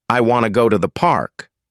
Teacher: The small words like to become weak and quick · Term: stress-timed language